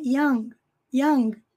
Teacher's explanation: Nós mal pronunciamos o G. Young. Young. É só um sonzinho bem breve na garganta.